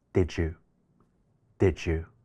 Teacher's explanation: 兩個單詞連讀嘅時候▁d▁同▁y▁會融合成另外一個新嘅音▁j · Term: 語音融合